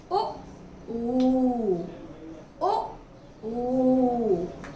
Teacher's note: देखिए तालव्य, तालू से बोला जा रहा है, ई, ई। ओष्ठ है, यानी होठों से बोला जा रहा है